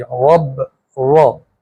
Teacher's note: را کے اوپر زبر ہے تو موٹی آواز ہوگی